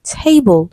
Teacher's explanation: table stressed on the first syllable